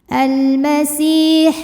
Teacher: Almasi si mad thobi'i zohiri. Karena ada ya sukun sebelumnya kasrah maka sin panjang dua harakat.